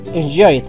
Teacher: al final por dos consonantes en este caso Enjoy eh es suena una d muy leve y muy rápido